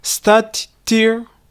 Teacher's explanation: The T at the end of start and the T at the beginning of tier merge. So instead of 2 T sounds, we hear just one.